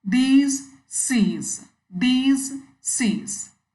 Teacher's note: Most of us pronounce sees as sees, sees. The last S is sounding like s, whereas the actual pronunciation is z, z. These, sees.